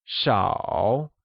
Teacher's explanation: few means 少 and is pronounced using a falling, rising tone